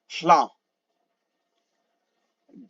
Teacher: you say law, but you breathe out through your mouth as you say it